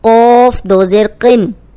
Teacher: اب یہ قوف موٹا ہے، دو زیر کے ساتھ بھی موٹا ہی پڑھا جائے گا.